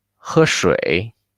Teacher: Although tone 3 has the stress, but it's a low pitch. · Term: tone 1 with tone 3